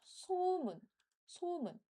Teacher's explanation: we start this with a higher pitch sound